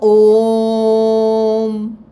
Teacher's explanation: यदि मैं ओ को बहुत लंबा खींच रही हूं तो बीच में हम एक प्लुत लगाते हैं जिसका चिन्ह एस की तरह होता है।